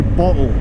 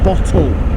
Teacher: the glottal stop where you don't pronounce your T's